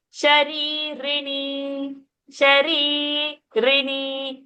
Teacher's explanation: Shari, that Shari is Ri is long. Then Rini, that Ri is short.